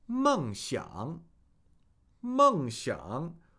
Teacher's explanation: fourth tone, third tone.